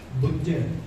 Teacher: ਇੱਥੇ ਅੱਧਕ ਲੱਗੀ ਨਹੀਂ ਹੋਈ, ਲੇਕਿਨ ਉਹਨੂੰ ਅਸੀਂ ਕੱਸ ਕੇ ਪੜ੍ਹਨਾ ਹੈ